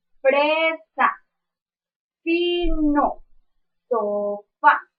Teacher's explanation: Su modo de articulación es fricativo y su punto de articulación es labiodental. ¿Por qué? Porque nuestro labio inferior hace conexión con los dos dientes superiores.